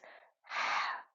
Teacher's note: It's a lot more breathy, isn't it? Actually comes from the middle of the throat.